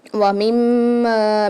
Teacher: آگے دیکھیے وَمِمَّا، میم کے اوپر تشدید آ رہی ہے، مشدد آ رہی ہے تو یہاں پر لازمی غنہ ہوگا، اور ویسے بھی میم کے اندر غنے کی ہمز پائی جاتی ہے تو یہاں پر ہم لازمی غنہ کرتے ہیں میم پر۔ وَمِمَّا، میم کے ساتھ الف مدہ بھی آ رہی ہے تو اس کو ہم ایک الف کی مقدار کھینچ کے پڑھیں گے میم کو اور غنہ بھی کریں گے